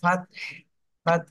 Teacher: ফাত লাস্টে একটু বাতাস বের করেন গোলা চেপে